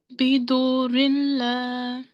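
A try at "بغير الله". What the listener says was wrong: Okay, bidurilla without nasal sound. Okay, what sign is it? What this mark is called? Shadda. So mushaddad letter is always pronounced with stress or emphasis. So here are two mushaddad letters. Both will be pronounced with a stress.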